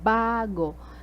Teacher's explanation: The stress is at the first syllable.